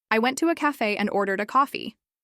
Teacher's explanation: Emphasizing ordered highlights the action of ordering.